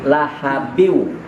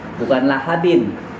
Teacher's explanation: Nah, di sini tanwin kasrotain. Mestinya bunyinya in, tapi bertemu dengan huruf waw, maka suara innya dimasukkan ke dalam huruf waw. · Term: idgham